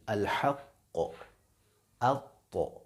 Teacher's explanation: خیال رہے کہ یہ جو 2 حرف ہیں، حرف قوف، حرف طا، ان میں جو قلقلہ ہے وہ جب آپ کریں گے تو آواز پیش کی طرف مائل ہوگی